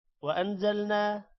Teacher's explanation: نون پر غنہ ہوگا نا لمبا ہوگا تھوڑا سا الف کی وجہ سے